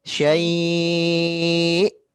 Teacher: Kemudian di akhirnya harus kita naikkan intonasinya karena huruf hamzah. Syai'. Gitu.